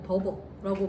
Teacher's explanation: 분명히 비읍인데 약간의 그런 엄청난 울림소리가 들어가 있는 듯한 공기 반 소리 반